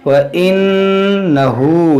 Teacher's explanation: یہاں دیکھیں نون مشدد ہے، اس میں غنہ کریں گے۔ · ہا پر الٹا پیش ہے، اس کو کھینچیں گے ایک الف کے برابر